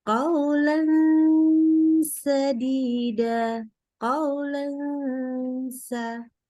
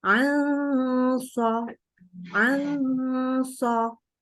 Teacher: Cuman walaupun makrotnya sama, tapi ingat tadi pangkal lidahnya beda, maka bunyi dengung daripada ketemu huruf sin dan dengan shad itu beda. Ketika dia ikhfa-nya ketemu sin, maka ikhfa-nya dimasukkan sebagai kategori tipis, ya, ikhfa yang tarkik. Sementara kalau ketika ketemu shad, maka dia ditebalkan atau ditafkhimkan dengungnya, ya, karena dia posisi pangkal lidah naik. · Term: ikhfa hakiki